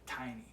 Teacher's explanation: sticking that T sound, the tongue to the roof of the mouth, really kind of pushing that out and pushing out a little bit more air, emphasizing it just a little bit more.